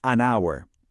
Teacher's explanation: La forma correcta es an hour. La razón, aunque estamos viendo una H, esa letra es muda. En esta palabra no la pronunciamos. El primer sonido que realmente hacemos es el de una vocal, our.